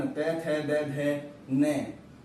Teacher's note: दांतों के आसपास जीवा स्पर्श करती है, इनका उच्चारण स्थान है दंत